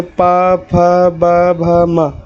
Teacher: इसमें ओठों के हेल्प से आप बोल रहे हैं, इसलिए उसका उच्चारण स्थान जो है ओष्ठ होगा।